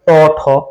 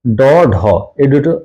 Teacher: ট ঠ উচ্চারণের সময় আমাদের স্বরতন্ত্রী অনুরোধিত হচ্ছে না কিন্তু ড ঢ এইটা উচ্চারণের সময় স্বরতন্ত্রী অনুরোধিত হচ্ছে সুতরাং এটা হলো অঘোষ ধ্বনি এই দুইটা হলো ঘোষ ধ্বনি এবং